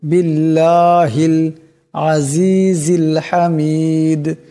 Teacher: হা লাম জের হিল বিল্লাহিল এখানে আল্লাহর লামের ডানে জের আসছে বার নিচে জের আছে তাই আল্লাহর লামকে পাতলা আওয়াজে পড়তে হবে